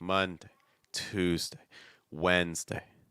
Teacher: because that's your stress part so you want to make sure when you get to the day part that you're lowering your pitch you're going down you're doing it fast you're doing it weak